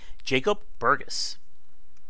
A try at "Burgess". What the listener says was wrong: Burgess, actually. It's a soft G for a soft man, and a very common mistake.